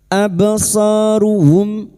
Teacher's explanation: Mim sukun dibaca jelas tanpa mendengung, idhar syafawi.